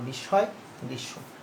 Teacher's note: মধ্য অন্ত মফলা সাধারণত উচ্চারিত না হয়ে সংযুক্ত ব্যঞ্জনটিকে দ্বিত্ব করে